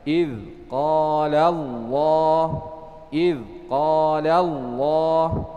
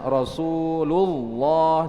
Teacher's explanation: Yang pertama adalah tafkhim, lam yang dibaca tebal, yaitu ketika sebelumnya di fathah atau di dhammah. Jadi sebelum lam yang terdapat pada lafzul jalalah Allah itu ada fathah atau dhammah, maka ditafkhim, dibaca tebal. Seperti contohnya idz qala Allah, kemudian Rasulullah, jadi ditebalkan, ya, dibaca tebal.